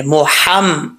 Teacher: ان محمدن, یہاں پہ اکثر لوگ مسٹیک کرتے ہیں, ہا کو ہا پڑھ دیتے ہیں. یہ ہا بریک ہے, اس کا تعلق جو ہے یہ گلے سے ہے